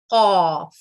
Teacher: اس کے بعد قاف حروف تفخیم ہے, منہ کو گول رکھتے ہوئے حلق سے اس کی ادائیگی ہوتی ہے